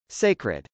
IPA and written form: sˈeɪkrəd (sacred)